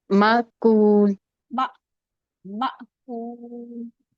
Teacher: حمزہ پہ سکون ہے تو جھٹکے کے ساتھ پڑھیں گے